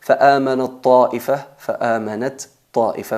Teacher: fusionamos la ta y ta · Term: Idgham al-mutajanisain